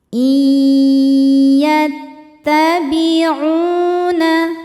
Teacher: huruf nun sukun dileburkan ke ya disertai bunyi dengung. Jadi di sini kita tahan. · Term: idgham bi gunnah